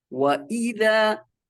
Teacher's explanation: Jangan sampai kedengaran kayak tashil, melemahkan hamzah. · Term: hamzah berbaris kasroh